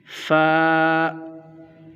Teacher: ऊपर के दांतो के किनारे और निचले होठ के तर हिस्से से यह फा अता होगा फ इसको हम इतना लंबा खींच कर नहीं पढ़ेंगे नर्मल ही